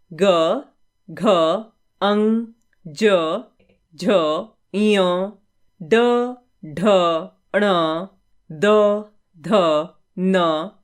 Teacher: जिन व्यंजन वर्णों के उच्चारण में स्वर तंत्री में कंपन होता है उन्हें घोष व्यंजन कहते हैं